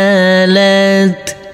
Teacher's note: jadi huruf mim kita baca pendek langsung masuk ke huruf shin